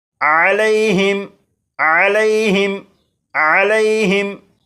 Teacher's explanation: اس لفظ کے آخر میں میم ساکن ہے اور میم ساکن کے بعد تو ہے، لہٰذا اس میم ساکن میں غنہ نہیں کریں گے، اور یہاں پر یالین ہے اس لیے لام کو بغیر کھینچے پڑھیں گے